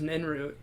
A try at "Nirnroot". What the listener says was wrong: No, it's Nirnroot, because there's the R. It's Nirn root.